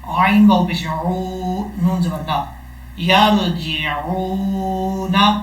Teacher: عین کو جب واو سے ملائیں گے یہاں ایک الف کی مقدار لمبا کریں گے. عین واو پیش عو، نون زبر نا، یرجعون.